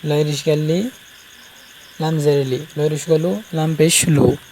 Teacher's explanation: জিভার আগা সামনের মানে দাঁতের গোড়ার নিচের মাড়ির সাথে লাগিয়ে উচ্চারণ করবেন।